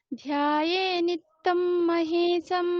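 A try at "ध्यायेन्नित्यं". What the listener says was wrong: নিত্যম নয় কিন্তু, ধ্যায়েন নিত্যম, দুটো নকার।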